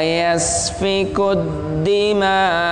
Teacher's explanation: Ma itu mat wajib muttasil, panjangnya sampai 6 harokat.